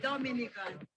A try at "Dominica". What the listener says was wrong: It is spelled D-O-M-I-N-I-C-A. It is pronounced Dominica, and it's situated between Guadeloupe and Martinique in the Caribbean.